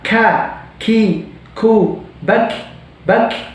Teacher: ketika kita mengucapkan huruf kaf, itu kita harus mengeluarkan udara